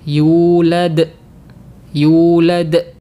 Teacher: seakan-akan setelah huruf Dal itu ada Hamzah sukun seperti ini jadi yang benar kita tidak boleh mengakhirinya dengan Hamzah